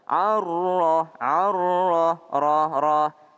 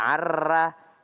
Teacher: Ada huruf ro, kalau dia baris fathah maka dia tebal.